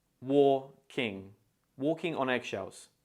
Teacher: make sure to break it down into two syllables and stress the first syllable the first syllable is pronounced very similar to war so try